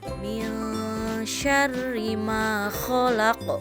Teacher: Min syarri, didengungkan ya, disamarkan ya, karena termasuk hukum ikhfa